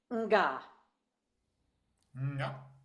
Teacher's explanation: the back of your tongue is high, and it feels like the back of the throat shuts down